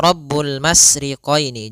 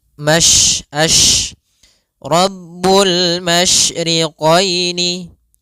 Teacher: satu sifat yang terkandung di dalam huruf syin yaitu menyebarnya suara. Sehingga jangan dibaca rabbul masriqoini. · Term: tafasyi